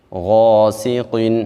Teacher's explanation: غین کو موٹا پڑھیں گے کیونکہ یہ حروف مستعلیہ میں سے ہے، موٹے حروف میں سے ہے۔ اور ایک بات یہاں پہ ذہن میں رکھیں، جب الف کسی موٹے حرف کے بعد آ رہا ہو تو الف کو بھی موٹا پڑھیں گے، جب الف کسی باریک حرف کے بعد آتا ہے تو الف کو بھی باریک پڑھا جاتا ہے۔ · تو غین چونکہ موٹے حروف میں سے ہے تو الف بھی اس کے بعد آ رہا ہے، تو ہم غین کے ساتھ الف کو بھی موٹا پڑھیں گے